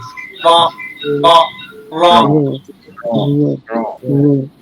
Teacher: জিহ্বার আগার উল্টো তার বরাবর করে তালুর সঙ্গে লাগাইয়া একটি হরফ উচ্চারিত হয়।